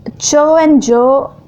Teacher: affricates it is released gradually so as to cause friction also the tongue first touches the alveolar ridge and then moves towards the palate · extent in both the air is stopped and then released but in the case of affricates it is released gradually so as to cause friction also the tongue first touches the alveolar ridge and then moves